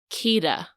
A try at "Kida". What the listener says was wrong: like, even when you say it now, it sounds like you're saying Kira. That's how it sounds in the movie, too. It sounds like they're saying Kira.